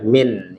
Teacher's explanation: huruf nun, ya, nunnya sukun ini harus dibaca jelas, tidak boleh ditempo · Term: izhar